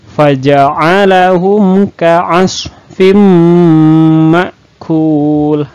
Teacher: selain dimasukkan ke bunyi mim ke bunyi m nah juga harus didengungkan dan ditahan karena ini disebut dengan lagu Naff Idgham Bighunnah nah seperti itu